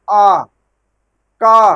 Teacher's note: भाई ठीक है, मुंह से आप जरूर बोलते हैं, लेकिन मुख नहीं, वहां कुछ ऐसे वर्ण हैं जो आप केवल कंठ माने केवल गले से निकलता है, आ, न जीभ काम कर रही, न दांत काम कर रहा है, कुछ नहीं कर रहा है, केवल मुंह खुला और डायरेक्ट आवाज बाहर निकल गई